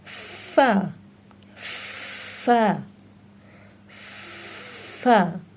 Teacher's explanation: اس میں اوپر کے دانتوں کو نیچے کے ہونٹوں کے اندرونی حصے سے ٹچ کرتے ہیں